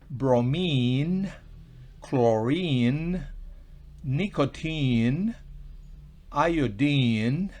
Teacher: en esta terminación INE, pues se pronuncia una I larga, prolongada, una I larga.